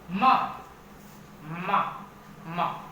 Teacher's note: होठ आपस में टकराए, हवा निकलने से पहले मुंह बंद हुआ, फिर एकदम से हवा निकली